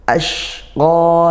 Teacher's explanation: Kalau ini shin ya, masih ngalir, dan desis. Qa-nya panjang satu alif yaitu mad tabi'i.